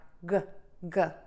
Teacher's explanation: the back of your tongue is pulled up and the tip of your tongue is pointing down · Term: g sound